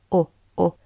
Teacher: notice your lips are shaped into a small rounded Circle as if you were about to whistle